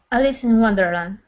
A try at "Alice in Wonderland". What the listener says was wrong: No. I'm hearing an S. I want to hear a Z. Alice Zin.